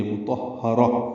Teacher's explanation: را پر پڑھیں گے اور اس کو تائے مربوطہ سے وقفاً ملا دیں گے، مطہرہ، اور اس پہ ہمس ہوگا، ہا پہ یعنی سانس جاری رکھیں گے